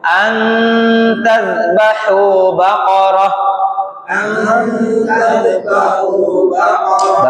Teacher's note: Didengungkan, anta itu nun sukun ketemu ta, hukumnya dengung.